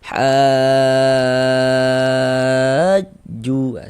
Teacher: Cara membacanya dipanjangkan dulu dia dengan enam harakat. Panjangnya en harakat. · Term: mad lazim kilmi mutsaqqal